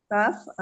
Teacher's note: pangkal lidah bertemu dengan langit-langit yang keras